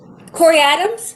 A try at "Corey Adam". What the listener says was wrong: Corey Adams. There's no S. For some reason there's no S. It's just Adam.